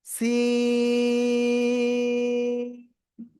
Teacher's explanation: জিহ্বার আগে সামনে নিচে দুই দাঁতের আগায় লাগাবেন, লাগিয়ে একটু কি চিকন আওয়াজে একটু শীষ মতো হবে এরকম। তারপরে আপনি তিন আলিফ না চার আলিফটা নিয়ে এই অক্ষরটা উচ্চারণ করবেন, সি।